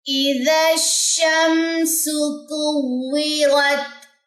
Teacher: دال کی جو زبر ہے وہ شین کے ساتھ مرج ہوگی